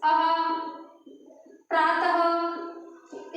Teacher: अयोगवाह में जो दूसरा है वो है विसर्ग। विसर्ग में देखा होगा जिसके उच्चारण करने में हम ह आधा ह वर्ण का यूज करते हैं